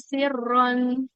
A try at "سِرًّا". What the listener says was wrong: kalau kalau mau berhenti nggak boleh siron ya. Dia jadi matiwat namanya. Panjang 2 harokat. Dilanjut baru baca tanwin. Siron illa.